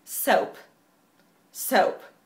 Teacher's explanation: Con schwa, si es inglés más británico